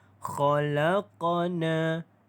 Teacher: Maka dia adalah qalqalah sughra dan detakan dia kecil.